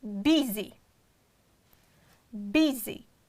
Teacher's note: And the first one is B, it is strong syllable and it's stressed, and the next syllable is unstressed, therefore we'll pronounce like a short E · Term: short E sound